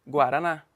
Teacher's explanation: última termina em a é a mais forte